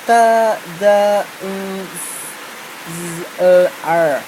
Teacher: sounds produced with the front part of the tongue against the alveolar ridge, the part of the roof of the mouth of the right behind the teeth.